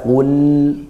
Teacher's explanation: Kemudian, jangan lupakan huruf Qāf; Bunyinya harus kuat, titik artikulasinya berasal dari bagian belakang lidah. Bagian belakang lidah.